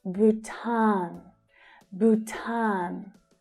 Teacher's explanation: So again, there is a long vowel sound in the first syllable, but the second syllable is the stressed one.